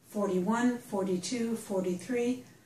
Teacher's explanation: we pronounce that T almost as a D